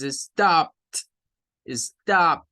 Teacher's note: la Ed va a sonar a una t